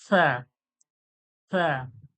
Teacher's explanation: জিভের আগালটা, সামনের যে দাঁত রয়েছে, দাঁতে ঠেকিয়ে হাওয়াটা সামনের দিকে বেরিয়ে যাবে